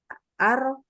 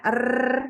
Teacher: huruf ro ada getarnya kan ar, ya ada takrirnya